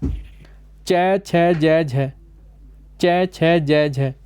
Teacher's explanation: तालव्य जो कि तालु से बोली जाती हैं